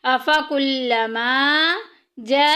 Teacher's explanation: افکلما جاءکم، جاءکم میں دیکھیں الف پیچھے زبر الف مدہ کا قاعدہ جاری ہو رہا ہے، اور حروف مدہ کے بعد اسی کلمے میں حمزہ آ گئی ہے، مد متصل ہو رہا ہے، 2 الف کے برابر لمبا کریں گے